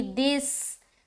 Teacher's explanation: دال کو سین سے ملاتے ہوئے سیٹی والی آواز ظاہر ہوگی